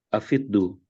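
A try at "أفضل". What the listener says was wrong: bukan. Kata kata apa namanya dasarnya adalah afdo. afdol. Di sini dibacanya afdol, bukan afdu. Ya, afdol bukan afdu. Kenapa kok seperti itu? Lah, sedangkan kalau misalnya kata yang lain, ya, misalnya zahaba. Zahaba itu ketika dimasukkan wawu di situ menjadi zahabu, koma. Ketika masuk wawu di situ menjadi komu.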